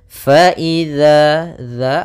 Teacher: dzal itu ujung lidah kita menempel dengan gigi seri. Sedangkan ee untuk ee zai itu seperti sin yang di mana posisi lidah kita di antara gigi atas dan gigi bawah ya.